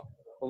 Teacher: व का उच्चारण स्थान क्या है? दंत प्लस ओष्ठ, दंतोष्ठम, ये 2 से उच्चारण होगा।